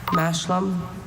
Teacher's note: Schwa in the second syllable.